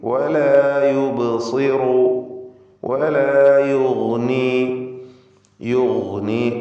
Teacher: യുഗ്നി ഗൈനിന് തഫ്ഖീം കൊടുക്കുക. ഇസ്തിഅലാഇൻ്റെ ഹർഫാണ്.